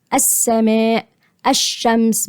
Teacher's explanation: التقارب طيب زي ايه اللام الشمسيه بالطاغيه هخشها على الطاء المشدده واللام هنا ايه لام شمسيه مضغمه